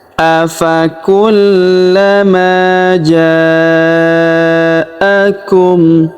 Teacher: huruf ma kita panjangkan dua harakat karena terdapat alif di depannya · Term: panjangkan 2 harokat